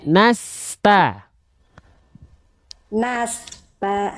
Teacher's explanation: Sin punya sifat sofir, hams dan rokhwas, berdesis, mengalir suara, mengalir nafas, terus mengalir, gak boleh ada jeda.